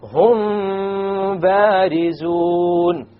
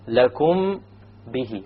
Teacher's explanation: So when the meme is followed by a ba, you perform a ghunna, and that is called ikhfa shafawi.